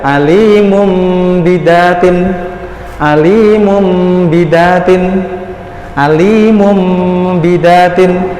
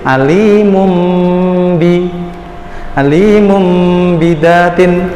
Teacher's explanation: mengganti suara nun sukun menjadi huruf mim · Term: iqlab